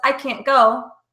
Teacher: and can't see a NT because naturally when we say it because the T is held it's very difficult to understand